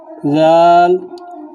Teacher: জাল যখন বলবেন তখন জিহ্বার আগা সামনের যে উপরে দুইটি দাঁত আছে সেই দুই দাঁতের আগার সঙ্গে লাগাবেন, হালকাভাবে লাগাবেন।